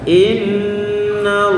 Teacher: Nun tasdid, jadi gunnah kamilah, gabungannya sempurna.